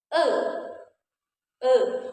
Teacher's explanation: posisi mulut kita itu dia semi tertutup. E e tidak terlalu terbuka dan tidak tertutup sama sekali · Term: e madya atas tengah